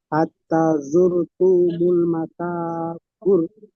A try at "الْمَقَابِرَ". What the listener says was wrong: মাকা, মাকা নয়, মাকা বললে কাফটা বারিক হয়ে যাবে। কফ পুরো অক্ষর, অর্থাৎ কফ জবর ক হয়। কফ জবর ক, কফ জবর কা নয়। ওই জন্য করে মাকাবির।